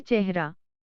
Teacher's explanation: हिंदी में ए का उच्चारण ह के पहले ह्रस्व स्वर के रूप में होता है